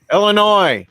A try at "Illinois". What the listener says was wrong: There is no sound on the end.